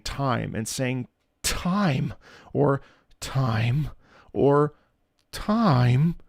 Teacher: Emphasis on the first consonant, emphasis on the stretch, ever so slight stretch in the middle of the word. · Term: word painting